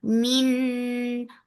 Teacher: For the circle ellipse, the sound is short. Min for kasra give e sound, but this kasra sound should not be too long. It should touch the e sound and then that's it.